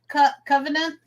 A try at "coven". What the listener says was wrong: Coven, Coven, Coven, no T, Coven.